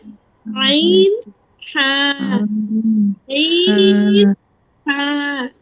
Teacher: 2 number মাখরাজ হলকের মধ্যখান হইতে আইন হা